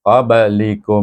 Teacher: ba mati kita baca dengan qalqalah sughra sebab ba adalah huruf qalqalah dan dia berada di tengah kalimah.